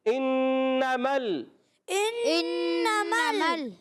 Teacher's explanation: میم کو لام سے ملانا، لام کو ہلانا نہیں ہے